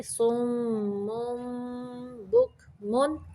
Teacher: یہاں پہ اقلاب کا قاعدہ ہے، تنوین کو با کے اندر ملا دینا ہے